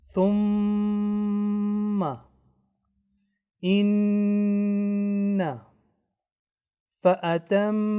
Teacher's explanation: They will be read with prolonged nasal sound of 2 counts. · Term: huruful gunna